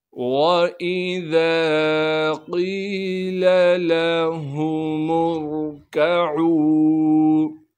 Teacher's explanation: اس لام کو بغیر کھینچے پڑھیں گے، لام کے بعد ہا ہے، اسے صاف کر کے ادا کرنا ہے